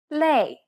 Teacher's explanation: it becomes similar to the a sound in the word play however try not to carry over the y sound too much try to relax your jaw and say it as if you're